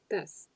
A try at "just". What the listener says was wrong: One with the letter J. Just